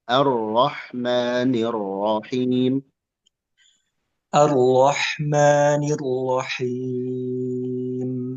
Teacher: Ra-nya kurang tebal tasydidnya